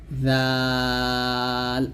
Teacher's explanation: ভাবে উচ্চারণ করছি জালটা ঠিক সেরকম ভাবে উচ্চারণ করতে হবে যে উপর দাঁতের দুই দাঁতের আগার সঙ্গে লাগিয়ে জাল পাতলা করে উচ্চারণ করতে হবে